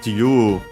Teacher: accent on the U. So low, high, low.